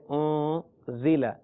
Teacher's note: نون ساکن کے بعد زا ہے، لہذا غنہ کریں